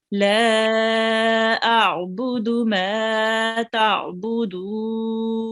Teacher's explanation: we have a medium long stretch on the la, so we have to make sure that we prolong it for longer than 2 seconds